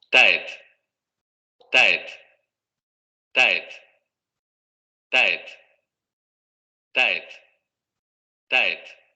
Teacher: en este caso va a ser dental, a diferencia de la alveolar inglesa